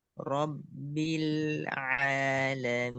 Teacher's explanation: jangan dilepas biar nempel terus lamnya langsung ke ain pas ngelepasnya itu langsung ke ain robil.